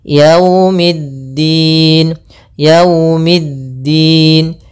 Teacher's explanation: jangan terlalu dihentakkan karena di sini bacaan Lin maka kita harus menyempurnakan daripada linnya kelembutannya